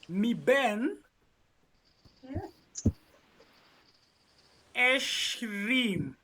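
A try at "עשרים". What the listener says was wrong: Careful with your shins and sins.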